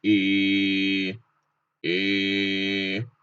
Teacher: Und zwar dürfen wir am Anfang wie immer übertreiben und sagen E, E. Der Ton bleibt gleich und geht lang raus. Danach, wenn man es richtig kann, sagt man E. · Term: langes E